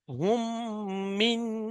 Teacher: মিম সাকিনের পরে মিম এসছে, ঈদগামে স্বাভাবিক।